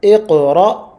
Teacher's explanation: So we have a qalqala on the qaf, iqra, and then we have a jerk sort of sound on the hamza